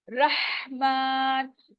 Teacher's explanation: रहमान, और रॉ, रॉ के ऊपर जबर है, इसको हमने मोटा अदा करना है।